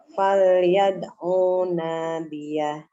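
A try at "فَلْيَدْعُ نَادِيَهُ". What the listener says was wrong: Pantulannya jelaskan. Nah, nanti latihan lagi kolkolanya ya. Dia kolkolah sugro tuh bukannya nggak ada suaranya. Bukan berarti sugro kecil, suaranya kecil malah hilang ya. Bukan seperti itu.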